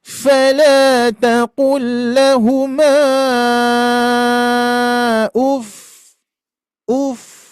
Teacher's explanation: Nabr itu adalah ee penekanan sedikit ya, sedikit pada huruf fa tersebut yang bertasydid